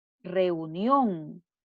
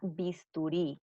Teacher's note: lleva la sílaba tónica en la última sílaba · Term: palabra aguda